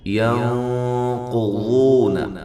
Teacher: ہے تو الذین، ذی یا مدہ ہے، ینقضون یہ اخفا ہے، نون ساکن کا موٹا اخفا ہے مع الغنہ، قاف کو موٹا ضاد کو موٹا، یہ واو مدہ ہے، نون کو لمبا نہیں کرنا، عہد اللہ